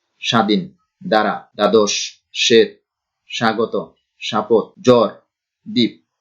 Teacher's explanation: প্রত্যেকটার সঙ্গেই শুরুতে বফলা আছে, কিন্তু বফলা উচ্চারিত হচ্ছে না।